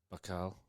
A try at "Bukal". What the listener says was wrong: Close. Well, you said buck. Bukal. Like a book. And an owl.